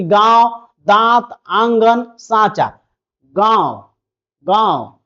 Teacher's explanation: नाक और मुंह दोनों से उच्चारण होगा। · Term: अनुनासिक